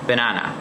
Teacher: in the word banana the stress is on the second syllable